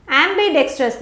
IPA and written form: ˌæm.bɪˈdek.strəs (ambidextrous)